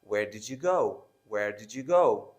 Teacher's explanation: When we have D and Y, so there is a J sound.